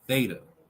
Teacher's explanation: Put your tongue behind your upper teeth, or in a more careful pronunciation, slightly protruding between them. Then let the air pass, and you'll hear the hissing, fricative noise that constitutes the theta.